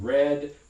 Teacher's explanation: in english we have this weird alveolar approximant as in red sometimes it's retroflex as in red very hard